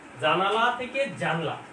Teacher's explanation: মাঝখান থেকে স্বরধ্বনি লোপ পাবে। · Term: মধ্য স্বরলোপ